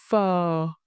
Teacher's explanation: produce the initial F consonant with a soft puff of air